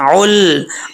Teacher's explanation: یا دعل یتیم، اب اس کو عل نہیں پڑھنا، لام میں کلکلا نہیں کرنا، عل، آواز لام پہ جم جائے